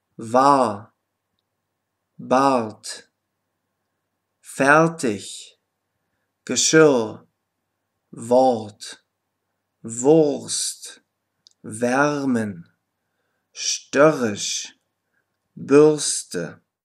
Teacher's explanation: das r wird in der regel sehr schwach ausgesprochen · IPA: [a]